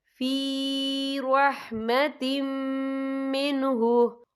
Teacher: वअतसमू बिही फ़सयुदखिलुहुम फ़ी रहमतिम मिन्हु, या देखिए फ़ी रहमतिम, ता के नीचे तनवीन है, तनवीन के बाद जो है मीम आ रहा है और मीम जो है हुरूफ़ यरमलून में से है तो यहाँ पर इदगाम होगा तो हम इसे गुन्ने के साथ पढ़ेंगे